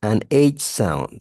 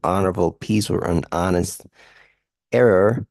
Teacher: when the H really doesn't have any phonetic representation or audible sound